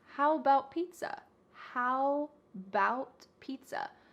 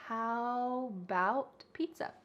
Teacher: The first a in the word about is gone. It's just missing. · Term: reduction